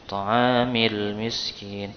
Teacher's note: alif lam qamariyah itu lamnya terbaca jelas